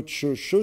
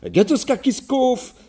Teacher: cette fameuse palatalisation qui fait que le « que » se transforme en « che »